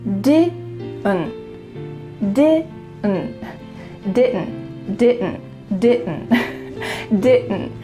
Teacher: So that final D is cut short. And the final T as well is cut. So it's really going to be just your throat.